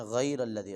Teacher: غین کو موٹا کریں گے اور را کو موٹا کریں گے